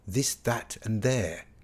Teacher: the other TH sound is the soft TH of this, that and there. We call this the voiced dental fricative.